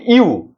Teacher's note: দুইটা স্বর পাশাপাশি বসছে এবং একসাথে উচ্চারণ হচ্ছে। যখন পাশাপাশি বসবে একসাথে উচ্চারণ হবে তখনই সেটা কেবল যৌগিক স্বর হবে।